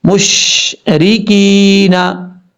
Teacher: یا ساکن سے پہلے زیر ہے، ایک الف کی مقدار اس کو لمبا کر کے پڑھیں گے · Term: یا مدہ